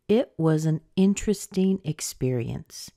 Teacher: experience is our noun that's where we get the most stress so that's where the strongest pitch will be and then the word interesting is stressed as well so let's